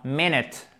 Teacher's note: l'accent tonique se trouve sur la première syllabe